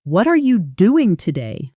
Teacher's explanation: Do you hear how are almost disappears, how the emphasis lands hard on doing and today? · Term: natural native stress